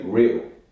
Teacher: The first feature of modern RP is the L vocalization